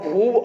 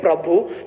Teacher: भू जो होता है वो जल्दी से बोल दिया जाता है, इसलिए जो आपका दीर्घ स्वर था वो उसका क्या हो जाता है, लघु स्वर के रूप में परिवर्तन हो जाता है